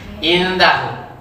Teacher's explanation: Disamarkan bacanya, agak dilamakan juga. Hu panjang. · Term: ikhfa